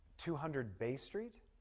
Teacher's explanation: when your partner asks you a question and you want to confirm something, you can have rising intonation.